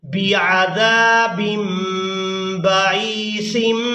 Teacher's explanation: यानी यहाँ तनवीन में जो नून की आवाज़ है इसको हम मीम के साथ बदल कर अदा करेंगे। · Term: इक़लाब